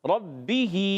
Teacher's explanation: ربی، با مشدد ہے، ذرا رک کر ادا کریں گے. با ادا ہوتا ہے دونوں ہونٹوں کے تر حصے سے. دونوں ہونٹوں کے تر حصے سے.